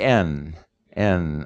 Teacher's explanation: And the N sound, again, is when your tongue comes to create in this case, it's not a stop, it's a nasal sound, but your tongue comes against the alveolar ridge, or the back of your teeth, and it vibrates, and that is the N.